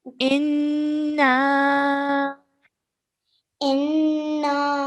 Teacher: So once we've pressed down on the noon mushaddad for 2 seconds, we have to elongate the sound for 3 to 5 seconds because of the maddu saghir.